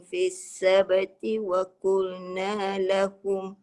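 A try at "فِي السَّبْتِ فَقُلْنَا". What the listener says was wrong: في السبت فقل, bukan waqul. Fa bukan wa. Fis sabti waqul. Dia sepatutnya fis sabti faqul.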